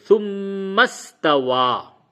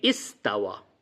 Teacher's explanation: جب میم کو سین سے ملا دیتے ہیں تو یہ جو حمزہ ہے، یہ حمزہ عارضی تھا، یہ گر جاتا ہے